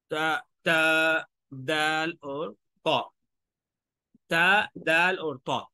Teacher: ऊपर वाले दांतों की जड़ पर जाके जो है वो जुबान जो नोक है वो लगेगी ऊपर वाले [संगीत] दांत